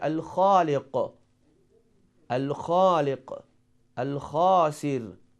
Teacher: We pronounce letter Lam and Kha is one of the letter of Qamari.